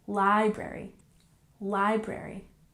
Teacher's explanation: Library we have the emphasis on the first syllable